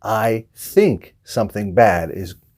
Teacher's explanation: instead of putting their tongue in between their teeth think they just say more of an S sound and say sink